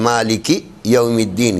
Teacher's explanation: مالکی کی کاف کو ذرا نیچی آواز سے، یو کی یا کو اٹھی ہوئی آواز سے. مالکی الگ ہو جائے، یو الگ ہو جائے.